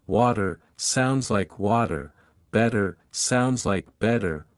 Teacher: in American English the T between two vowels often sounds like a quick D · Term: flap T sound